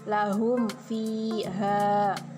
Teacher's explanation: maka hukum bacaannya terang dan jelas di bibir dan mulut rapat tertutup. Cara membacanya harus dibaca jelas. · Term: idhar syafawi